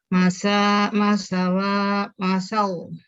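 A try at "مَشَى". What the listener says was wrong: Itu wazan da'awa, itu udah ada awa nih. Masya.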